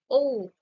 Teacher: আমরা যখন ও বলছি ঠোঁটটা গোলাকৃতি হয়ে যাচ্ছে